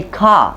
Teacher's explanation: in new england they cut off the r and they just say car